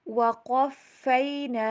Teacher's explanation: قاف کو موٹا کر کے پڑھیں گے ، فا کے پر تشدید آ رہی ہے، اس کے اوپر